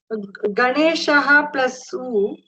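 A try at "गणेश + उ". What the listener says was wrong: There is no Visarga at all. Hold on. Don't read what is not there.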